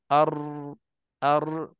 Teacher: Dan huruf ra pula, apa yang berlaku lencongan pada huruf ra, dia terbalik. Huruf ra pula daripada belakang dia datang lebar, luas. Lepas tu dia disempit bahagian depan, seolah-olah dia nak keluar daripada hujung lidah, tepi lidah depan, bahagian tengah aja.